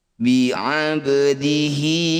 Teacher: Setiap ada hi atau hu yang dibaca panjang disebut bacaan mad silah qasiroh. Panjangkan hi ini 2 harokat atau 1 ayunan saja